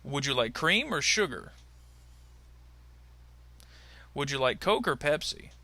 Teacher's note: sometimes you might hear a slight pause in between the first word and the word or but often times they will be linked together so it kind of will sound like cramer or coker but